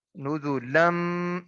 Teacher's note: تنوین کے بعد میم ہے جو کہ حروف یرملون میں سے ہے، یہاں پہ ادغام بالغنہ ہوگا